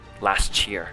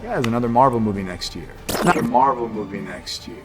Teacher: When we have a word that ends with a th sound and right after we have a word that begins with the y sound, these two words connect and turn it into a ch sound. So instead of saying last year, you can say last year.